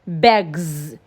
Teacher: If you place your palm on your vocal cord, you will feel a vibration. It's a voiced consonant sound. So because of that, the S will sound Z. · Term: Z sound